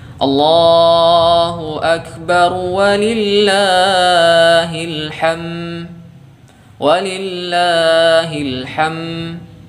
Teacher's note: ketika berhenti pada akhir dari lafaz takbir ini, huruf dalnya tidak nampak ya.